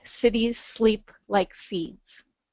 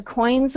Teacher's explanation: the comforting, soft, sibilant sounds of that alliteration at the end with the cities, sleep, and seeds contrast the hard consonants of the coins